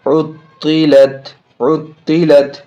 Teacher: تو یہ ہو گیا یہ تشدید، یعنی تشدید والے حروف کو دو بار بھی پڑھ رہے ہیں، تشدید والے حروف کی آواز میں سختی بھی ہو رہی ہے